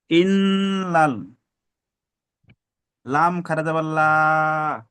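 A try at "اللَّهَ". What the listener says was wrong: লা নয়। আল্লাহ শব্দের ডান দিকে যাবার এসছে, মানে পুর হবে, ল পড়তে হবে। ইন্নাল্লাহ।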